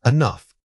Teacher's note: The opening syllable needs to be extremely quick, barely audible at all.